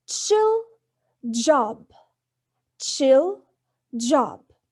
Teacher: Notice that ch in chill and j in job, the air is blocked with tongue just beyond the alveolar ridge, then released as a fricative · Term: Affricate